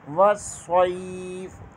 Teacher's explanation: صاد حروف صفیریہ میں سے ہے، صاد ادا کرتے ہوئے سیٹی کی آواز آنی چاہیے، صاد کو پر پڑھیں گے۔ صاد کے آگے یا ہے، یہاں پر یا لین ہوگا۔